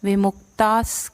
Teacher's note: ता के बाद जो विसर्ग है उसका अगला वर्ण स है, तो उसका विसर्ग का उच्चारण स जैसा रहेगा